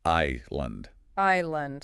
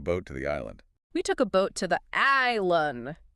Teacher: No s sound at all. None. We took a boat to the island.